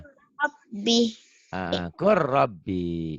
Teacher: Lam matinya nggak dibaca